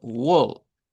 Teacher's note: cuando se encuentra una A con una L suena a una o corta